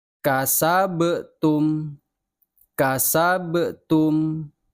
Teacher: Awas Bacanya jangan kasabtum harus ada pantulan karena ba Ini adalah huruf Qalqalah